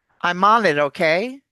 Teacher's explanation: all those words link to one another and you have to say them all in one breath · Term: linking